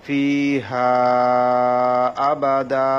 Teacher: ফিহা আবাদা, এখানে 3 আলিফ টানতে হবে, যেহেতু জবর বাম পাশে খালি আলিফ, মদর হরফের পরে লম্বা হামজা এসেছে, সেজন্য এখানে মধ্যে মুনফাসিল 3 আলিফ টানতে হবে।